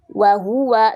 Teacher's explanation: Wa huwa, nih wawunya maju mulut, wa huwa, hu-nya juga maju mulut ya. Ini maju mulut semua.